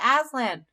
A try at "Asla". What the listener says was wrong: No N. Asla.